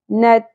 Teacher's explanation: ت کے اوپر ہلکی سی تھ کی آواز آتی ہے، لیکن بہت زیادہ کلیئرلی بھی نہ ہو